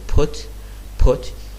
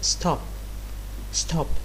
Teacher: a lower aspirated pair as in the word stop stop so if you pronounce stop you can feel that there is no explosion coming out of your mouth